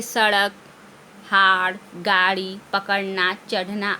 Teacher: इनके उच्चारण करते समय जीभ झटके से ऊपर जाती है, इसे उच्छिप्त व्यंजन या ऊपर फेंका हुआ व्यंजन भी कहते हैं।